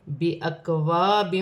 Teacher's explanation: اور یہاں پر حمزہ کو کاف کے ساتھ ملا کر پڑھا جائے گا، جیسے بِأَكْوَابٍ، الف سے پہلے زبر ہے تو الف مدہ بنے گی، ایک الف کی مقدار کھینچ کر پڑھا جائے گا